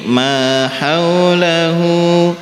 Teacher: antara ma sama hu sama-sama panjang 2 harokat